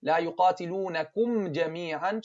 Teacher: the jim is not رخو is شديد means the sound is cut off okay touch the middle touch with the middle part of your